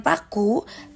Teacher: Saat pengucapan paku, bibir tertutup rapat lalu dilepaskan dengan nutupan udara.